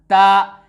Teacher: ता का मखरज है जुबान की नोक और सनाया उलिया का जड़ से ता निकलता है